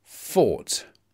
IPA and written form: fɔːt (fought)